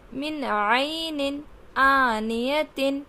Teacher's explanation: نون ساکن کے بعد اگلا حرف ہمارا کیا آ رہا ہے؟ حرف حلقے میں سے عین آ رہا ہے تو ہم یہاں نون کو ظاہر کریں گے۔